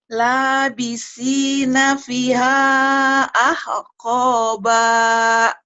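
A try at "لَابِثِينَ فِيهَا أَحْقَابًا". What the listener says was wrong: B-nya panjang, ada matobi'i. Labisina fiha ahqaba.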